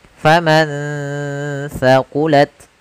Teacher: ada nun sukun bertemu dengan huruf tha, maka nunnya disamarkan ke huruf tha. Faman thaqulat, sambil ditahan gunnahnya.